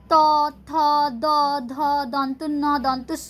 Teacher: जब हम लोग पढ़ते हैं त, थ, द, ध, दंत, न, दंत, स, तो हम लोगों का जीभ जो है दांत में जाके टच कर रहा है, सामने की तरफ दांत का गोड़ा में आके टच कर रहा है, इसीलिए इसे कहा जाता है दंतो ध्वनि, ठीक है।